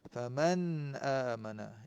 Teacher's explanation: Nun mati bertemu dengan hamzah, izhar halqi.